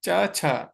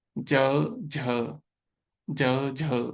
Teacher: च छ no vibration. ज झ ज झ ना वाइब्रेशन हुई।